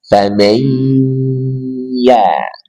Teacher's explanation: tengah lidah dengan ke langit-langit di atasnya